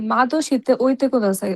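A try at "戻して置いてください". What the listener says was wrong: মদশিতে, মাদো না, মদশিতে ওইতে কুদাছে।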